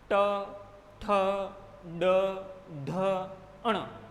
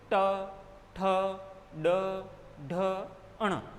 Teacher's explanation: जिह्वा झटके के साथ में मूर्धा को छू करके तुरंत वापस आ जाएगी, झटके के साथ। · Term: मूर्धन्य व्यंजन